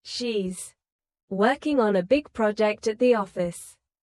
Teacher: Stress working, big project, and office.